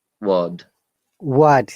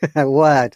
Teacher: So R is replaced by the vowel sound and that is the rule.